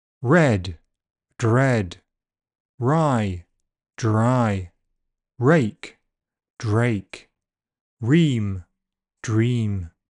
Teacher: After D, R is a voiced fricative.